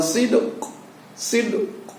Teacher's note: suara koknya itu hampir nyaris tidak terdengar, yang terdengar sid. Qalqalah di sini pada ujungnya itu kita simpan atau nyaris tidak terdengar, kita munculkan di dalam rongga mulut kita.